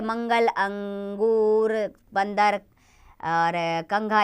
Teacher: अनुस्वार के उच्चारण में हवा केवल नाक से निकलती है।